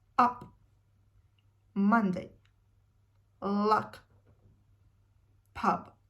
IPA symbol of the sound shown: ʌ